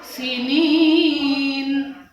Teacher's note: mat tabi'i panjang 2 alif atau 2 harakat